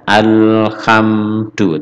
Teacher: karena ini bukan huruf Qalqalah bacanya Alhamdulillah tanpa ada pantulan sama sekali Alhamdulillah Ini namanya ilhar Qomariah ada Al Alam ta'arif bertemu ha · Bacanya alhamdu tanpa ada pantulan sama sekali. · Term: bukan qolqolah